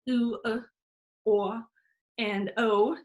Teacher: all of our back vowels, oo, o, and o, those are our rounded vowels. Those have lower F2s because they have lip rounding. Our F2 is going to be raised by a constriction in the oral cavity, in the anterior oral cavity behind the lips.